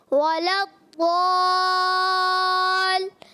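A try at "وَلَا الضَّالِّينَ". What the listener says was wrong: لام کو مشدد رکھیں، وَلَضَّالِّ،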